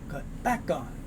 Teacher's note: we have that K sound moves over, so it's not cut back on, it's cut back on.